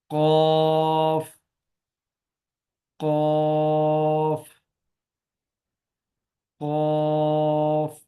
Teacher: ये जो ऊपर से थोड़ा सा गोश्त नीचे लटका होता है इसको कौवा कहते हैं। तो जुबान की जड़ को कव्वे के साथ लगाना है